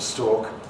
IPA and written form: stɔːk (stalk)